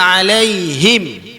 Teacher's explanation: Dia sebab ha kasrah bunyi dia hi. Ha kasrah bunyi hi, bila mim tu mati jadi him.